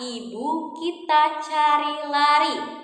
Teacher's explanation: kita punya bunyi vokal I tinggi atas depan